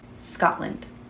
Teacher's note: that T usually kind of goes away a little bit.